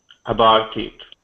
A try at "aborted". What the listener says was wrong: Aborted. So get that R sound in there.